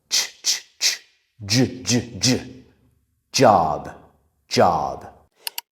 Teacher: t and then sh to make j we just need to add our voice to the ch sound. So the t becomes a d and the shh becomes a like z j. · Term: J sound